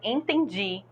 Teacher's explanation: a última sílaba que não é acentuada mas que é mais forte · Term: oxítona